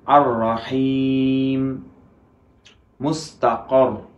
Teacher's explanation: র এর ক্ষেত্রে জিহ্বার আগাটা পরিপূর্ণরূপে স্পর্শ করবে, কিন্তু কিছুটুকু ফাঁকা থাকবে।